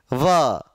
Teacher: व में दांत और ओष्ठ, होठ भी हिलेंगे और हल्का सा दंत का टच